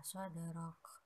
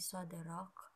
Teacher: Dinamakan qalqalah sugro karena huruf qalqalah dal berharokat sukun dan posisinya di tengah kalimat. Maka cara membacanya yaitu dipantulkan dengan ringan.